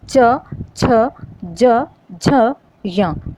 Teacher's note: जब हमने बोला च, छ, ज, झ, य, ये जब हम वर्ण बोलते हैं तो जो हमारी प्राणवायु है वो गले से थोड़ा ऊपर तालु पर प्रेशर डालती है